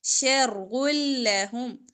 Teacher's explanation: بل ہوا شر لہم را موٹا باقی حروف باریک